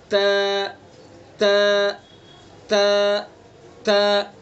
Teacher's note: तो इस तरह से अदा करना है ज़बान की नोक को सना उलिया की जड़ पर लगा करके।